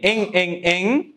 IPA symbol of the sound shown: ŋ